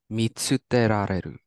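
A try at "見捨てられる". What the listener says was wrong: Perfect. Mitsuterareru. Perfect.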